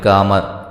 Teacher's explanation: اس کو قد قامت الصلاۃ، اب قد قاف کی بجائے کاف پڑھ دیا